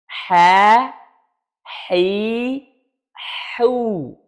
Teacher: Perhatikan, aliran udara ada, hamas. Aliran suara yaitu rokhawah juga ada.